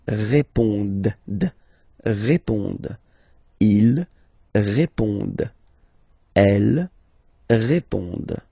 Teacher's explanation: classic ending, ENT, but then you don't pronounce it.